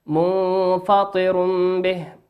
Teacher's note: وقول ربنا عز وجل منفطر به تنوين أتى في كلمة منفطر تنوين أتى بعده حرف الباء والباء من حرف إقلاب